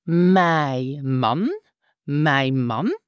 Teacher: we have again to drop the final n of mine